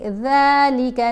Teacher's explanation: ذال کو ادا کرتے ہوئے بھی زبان دانتوں کے درمیان میں رکھی جائے گی۔